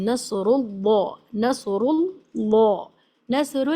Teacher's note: नसरू की र पर पेश है इसलिए इसको मोटा पढ़ रहे हैं